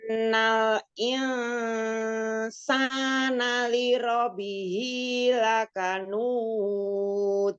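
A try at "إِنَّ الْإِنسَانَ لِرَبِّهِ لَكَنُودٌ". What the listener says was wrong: sa-nya ya, sin fathahnya itu masih terikut dengan al-khoisyum. Jangan terikut dengan al-khoisyum. Jangan masuk ke hidung, sa-nya. sa-nya udah al-jaub, sa. Innal insana insana. sa-nya jangan sana, jangan masuk ke hidung. ba-nya tasydid, jangan lupa.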